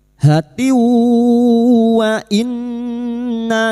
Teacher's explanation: Idgham bighunah. Masuk pada huruf wau dan mendengung selama tiga harakat. Hatiwah. · kasrotain bertemu wawu idgham bi gunnah